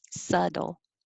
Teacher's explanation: We don't say the B, and the T sounds like a D.